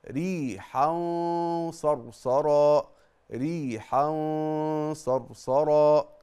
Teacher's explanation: الغنة مفخمة لان الغنة تتبع ما بعدها